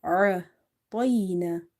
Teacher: ayn is from the middle of the throat